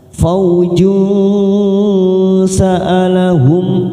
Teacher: hum mim sukun bertemu kha, idhar safawi kita baca jelas